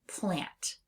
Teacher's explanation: We hear that nasalized a sound in lots of words including the word lamp or the word plant.